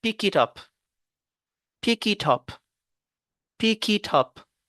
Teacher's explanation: Ici, on a lu les mots séparément. Maintenant, on va lier le K, le K et le I, le T et le A. · Pick it up, c'est comme si c'est un seul mot.